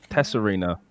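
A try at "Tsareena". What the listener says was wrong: It's just like a silent T. It's like Like Serena Williams.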